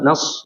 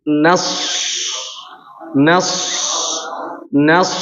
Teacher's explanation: Dan ketika mau masuk ke huruf shadnya, nun ketika masuk ke huruf shadnya, nas, ya kan, nas, ini sudah langsung tebal, ya. Langsung diangkat suaranya.